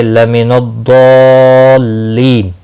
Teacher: ضاد مستعلیہ ہے، پر پڑھا جائے گا اور یہاں پر مد لازم ہے۔ حروف مدہ کے بعد جب بھی ساکن یا مشدد حرف آتا ہے تو مد لازم لگتی ہے، 5 الف کے برابر کھینچ کر پڑھیں گے۔